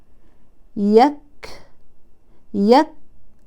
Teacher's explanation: إذن الشدة والهمس حدثت في زمنين مختلفين، الأول الشدة يليها الهمس، انغلق المخرج فانحبس الصوت وهذه صفة الشدة، ثم فتح المخرج انفك المخرج فجرى النفس وهذه صفة الهمس. إذن حرف الكاف كان شديدا في البداية مع انغلاق المخرج، ثم صار مهموسا بعد فتح المخرج، وهذان زمنان مختلفان. · الكاف فيه شدة يعني انحباس للصوت، وذلك بسبب انغلاق المخرج، وكذلك هو حرف مهموس يعني المخرج مفتوح يمر منه الهواء النفس. إذن الشدة والهمس حدثت في زمنين مختلفين، الأول الشدة يليها الهمس، انغلق المخرج فانحبس الصوت وهذه صفة الشدة، ثم فتح المخرج انفك المخرج فجرى النفس وهذه صفة الهمس.